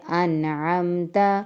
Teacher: نون ساکن کے بعد عین ہے تو یہاں پر ہم نے غنہ نہیں کرنا